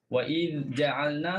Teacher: selesaikan dal, lepas tu baru sebut jim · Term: izhar